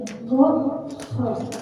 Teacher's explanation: Dia keluar dari ujung tenggorokan. Nah, dari ujung tenggorokan berarti dia mendekati pangkal lidah.